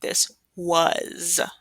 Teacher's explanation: We're making that Z sound for the S.